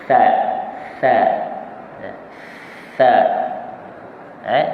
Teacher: Maka kalau tha ke hujung lidah kita kena berhampiran dengan gigi kacip sebelah atas, gigi tengah kan. Duduk di bawah gigi tengah.